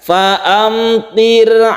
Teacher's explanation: ra tarqiq atau tipis maka ditipiskan ketika membaca sukun ra ini tipisnya ro ini caranya bibir kita di ke bawahkan